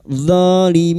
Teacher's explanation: Mad arid li sukun 4 harakat kita panjangkan.